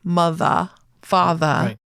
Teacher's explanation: people often drop the rs when it occurs at the end of the words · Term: non-rhotic